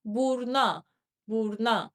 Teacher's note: that U in the final syllable will drop and it will become burna, burna, meaning to the nose.